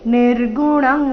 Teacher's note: ಅನುಸ್ವಾರದ ಉಚ್ಚಾರಣೆ ಕ ವರ್ಗ ಅನುನಾಸಿಕ ಇಲ್ಲಿ